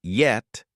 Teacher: tongue body rises near the hard palate, without touching, then drops into the vowel.